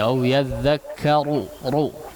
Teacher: Huruf ro dibaca tebal ya. Salah satunya di sini au yadzakkaru ru ya, agak ditebalkan ru.